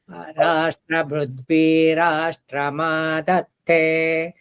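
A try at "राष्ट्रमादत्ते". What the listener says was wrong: ಇಲ್ಲಿ ನೋಡು ಅನುದಾತ ತೋರಿಸೋದ ಕೇಳಿದೆ ನಿನಗೆ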